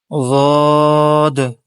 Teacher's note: زبان کا حافہ یعنی اس کی کروٹ کا وہ حصہ جو حلق کی طرف ہے، اور اوپر کی 5 داڑوں کی جڑیں، اس سے ضاد نکلتا ہے